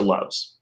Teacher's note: because your vocal chords are already going it makes it easier to just go into the z